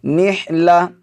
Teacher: تو یہ قاعدہ آپ ذہن نشین کر لیجئے کہ قرآن مجید میں جہاں بھی گول تا پر ہم وقف کریں گے تو اس کو ہا سے بدل دیں گے، کیونکہ یہاں پر وقف مطلق کی علامت ہے جو چھوٹی سی توئیں بنے ہوئے ہے۔ تو اگر ہم یہاں پر وقف کریں گے تو پھر اس کو نحلتن نہیں پڑھیں گے بلکہ گول تا کو ہا پڑھیں گے، یعنی ہا سے بدل دیں گے، نحلہ۔ · گول تا کو میں نے ہا سے بدل دیا ہے۔ تو یہ قاعدہ آپ ذہن نشین کر لیجئے کہ قرآن مجید میں جہاں بھی گول تا پر ہم وقف کریں گے تو اس کو ہا سے بدل دیں گے، کیونکہ یہاں پر وقف مطلق کی علامت ہے جو چھوٹی سی توئیں بنے ہوئے ہے۔